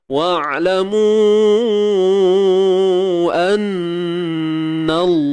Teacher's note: Lam bersabdu ni perlu ditebalkan bacaannya. Sebab apa? Sebab sebelum dia ada huruf yang berbaris atas.